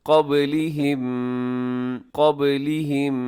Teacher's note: قب با کو ہلائیے گا، با حروف قلقلہ میں شامل ہے